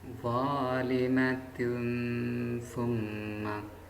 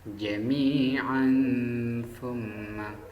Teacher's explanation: Jadi lafaz zalimatun summa itu dibaca ikhfa karena dhamma tanwin bertemu ta.